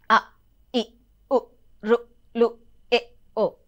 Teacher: ఇక్కడ ఆ 5 విధాలు ఏంటో ఒకసారి చూస్తే, ఫస్ట్ మనకి హ్రస్వములు, తర్వాత దీర్ఘములు, తర్వాత ఫ్లుతములు, తర్వాత వక్రములు, వక్రతమములు, ఇట్లా ఉంటాయి అన్నమాట. ఇప్పుడు హ్రస్వములు అనుకోండి, ఒక మాత్ర కాలంలో పలకబడతాయి. హ్రస్వములు అంటే ఒక మాత్ర కాలంలో, ఒక మాత్ర కాలం అంటే రెప్ప ఇట్లా మూసి తెరిచే అంతసేపు అనమాట.